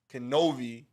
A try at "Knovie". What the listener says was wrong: With the K. Pronounce the K.